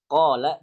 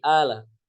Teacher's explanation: di Mesir, orang mengucapkan qaf jadi hamzah, qala jadi ala.